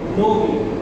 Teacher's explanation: অটা ও এর মতো উচ্চারণ হয়